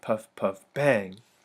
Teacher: the first two syllables are unaccented the last one is accented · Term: anapestic